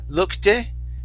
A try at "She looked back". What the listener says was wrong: Okay, take off that extra vowel sound. She looked back.